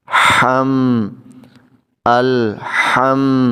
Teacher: ہا جب ادا کرتے ہیں تو حلق سے آواز آتی ہے، حلق سے ادا ہوتا ہے، یہ ہلکی ہوتا ہے، ہا ہلکی اس کو بولتے ہیں، یہ بھارا نہیں ہوتا، اس میں سانس کی آواز آتی ہے